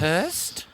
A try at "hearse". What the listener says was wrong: You mean a hearse. There's no hearse. There's no T on the end of it. It's just a hearse.